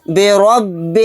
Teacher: را کو موٹا یعنی پر پڑھیں گے کیونکہ را کے اوپر زبر ہے۔ برب الناس، یہاں پر دیکھیں نون کے اوپر تشدید ہے، یہاں پر غنہ کر کے پڑھیں گے، سین کو ساکن بنا کر پڑھیں گے آیت کرنے کی صورت میں۔